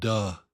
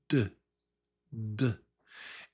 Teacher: And the tongue, the tongue taps behind your top teeth. It taps the sort of the roof of your mouth and behind your top teeth.